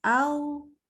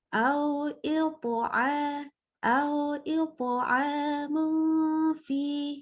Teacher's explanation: Waktu hamzah fathah ketemu waw sukun, usahakan jangan mulutnya jadi o. Dia tetap a ya.